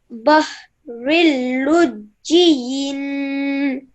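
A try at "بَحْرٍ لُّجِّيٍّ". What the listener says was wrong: Excellent. Well done. Well done. That was really, really nicely read.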